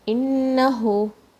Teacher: Noon shadda, there's a strong gunna here, and then you give it 2 counts here.